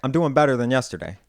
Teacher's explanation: So in order to differentiate those two sounds, what we end up doing is we move our E vowel back